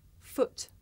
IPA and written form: fʊt (foot)